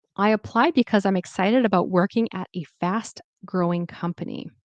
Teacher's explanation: So I applied because I'm excited about working at a fast growing company. Notice how the intonation went down because I made it like it was a sentence.